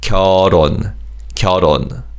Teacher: And in terms of pronunciation, 리을 받침 in 결 carries over.